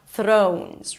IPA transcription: ˈθroʊnz